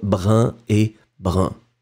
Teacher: Si vous allez en France, en général, on ne fait plus la différence maintenant entre brun et brun.